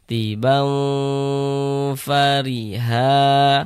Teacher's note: Jadi bagian baunya itu kita tahan, kita panjangkan sejenak. Nah, sepanjang dua harakat. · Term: digunahkan